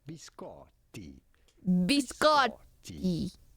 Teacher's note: You do want to stress on the middle syllable and on the double T.